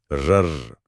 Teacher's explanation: जैसे र, इसे प्रकंपित या लुंठित कहा गया है। इसे बोलते समय जीभ आगे पीछे कांपती है, जैसे कोई इंजन स्टार्ट हो रहा हो।